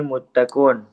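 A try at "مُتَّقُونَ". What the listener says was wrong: Muttaquna, ujungnya baca.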